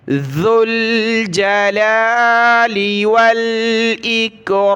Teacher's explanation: لام کے اوپر کھڑا زبر ہے، ایک الف کی مقدار کھینچا، ذو الجلال والاکرام، واو لام زبر ول، حمزہ کاف زیر ایک، والاکرام۔